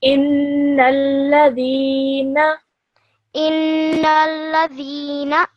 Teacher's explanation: you should hold the noon gunna sound in your nose for around 2 seconds